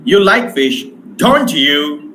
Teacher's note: rising tone has been used in question tag that shows uncertainty or requires an answer, confirmation of the answer.